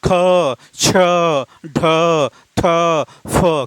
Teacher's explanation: आपका दूसरा और चौथे के उच्चारण में मुख से अधिक हवा निकलती है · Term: महाप्राण